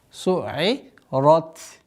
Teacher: Ра твердая и та фрикативная.